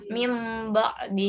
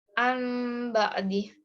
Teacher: sukun atau tanwin bertemu dengan huruf ba cara membacanya adalah dengan menyalahkan huruf nun sukun atau tanwin menjadi suara mim dengan merapatkan dua bibir dan mendengung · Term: iqlab